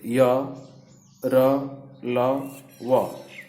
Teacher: अंतस्थ व्यंजन को अर्ध स्वर भी कहा जाता है, क्योंकि इनके उच्चारण में जीभ, तालु, दांत और ओठों का पूरा स्पर्श नहीं होता है